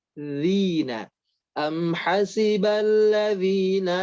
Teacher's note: Ayat keempat, am hasiballadzina ya pada huruf zal. Huruf zal pastikan ujung lidahnya bergesekan dengan gigi seri atas.